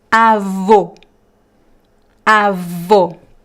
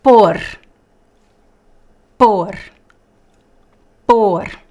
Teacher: the graphic accent in this case not only makes the sound closed it also makes this sound strong stressed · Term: close sound